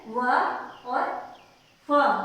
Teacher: जो नीचे के होठ और ऊपर के दांत से बोले जाते हैं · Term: दंतोष्ठ्य